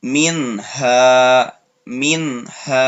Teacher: min baca minnya jelas, tidak didengungkan secara sempurna. Jadi tidak mingha, tidak seperti itu. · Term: idhar halqi